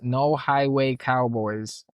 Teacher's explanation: the phrase no highway cowboys has 5 distinct diphthongs, one in every syllable